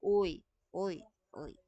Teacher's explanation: Nasa gitna, yung dila, pero nasa likod yung tunog.